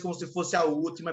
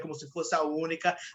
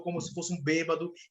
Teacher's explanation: ele coloca todas as últimas palavras como sendo proparoxítonas